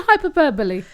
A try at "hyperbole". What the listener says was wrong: Hyperbole. You put one too many syllables. Hyperbole.